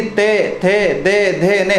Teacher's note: हमारी जो जिह्वा है, हमारी जो जीभ है दांतों के स्पर्श करती है।